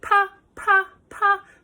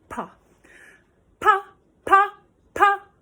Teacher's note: So it's a pa, pa, pa sound. We want to really hear the P and the H in that.